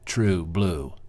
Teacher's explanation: spondy is two one syllable words stressed so true blue right you have two words equal emphasis